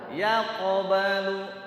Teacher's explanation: Jangan ada jarak antara ya dengan ko-nya, pantulannya. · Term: qalqalah sugro